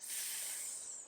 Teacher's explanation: right place your child needs their lips and teeth slightly open tip of the tongue up in the ridgy spot behind the front teeth and size of the tongue up against the sides of the top teeth then we hiss the air out like this the ear should flow down the middle of your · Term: s sound